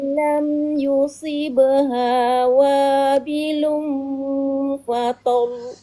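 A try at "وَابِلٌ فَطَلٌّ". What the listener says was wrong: Kurang naik lagi suaranya. Wabilun fadol gitu. Naikkan suaranya.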